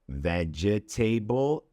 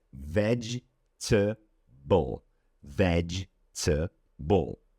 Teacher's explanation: The correct pronunciation would be vegetable. So instead of 4 syllables, we have 3 syllables. It's not vegetable, it's vegetable.